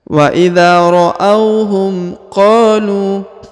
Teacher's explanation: huruf qa dipanjangkan 2 harokat karena di depannya terdapat alif